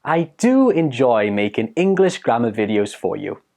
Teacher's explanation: put the stress on the do when you're speaking